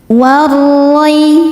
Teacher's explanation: Ro dibaca tafkhim karena berharokat fathah maka ro-nya tebal. Warroi. Roi ada harfulin karena ya sukun sebelumnya fathah maka ro-nya maka dilembutkan atau dilunakan.